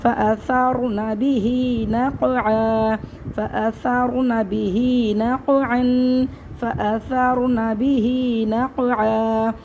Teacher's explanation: حالت وقف میں ایک زبر ختم ہو جائے گا اور اس کو ہم ایک الف برابر وقف صورت میں کھینچ کے پڑھیں گے